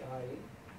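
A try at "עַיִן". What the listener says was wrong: This is silent. You're saying the vowel. You're saying the vowel. It used to be a guttural. A guttural. But it's no more. I mean, now it's just silent.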